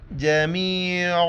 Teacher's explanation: عین کو گلے سے کرنا ہے